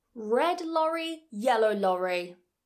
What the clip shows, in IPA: l and r